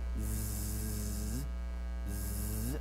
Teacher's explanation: your hand on top of your head and you go z-z you feel that buzzing the vibration top of your head that tells you that your vocal cords are vibrating